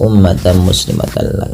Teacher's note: Lafal ummah di sini mimnya berharakat tasydid dan berwarna hijau, artinya ia bacaan ghunnah dan perlu ditahan dalam pelafalannya. Ya, ummah tidak langsung dilepas ummatan muslimatan.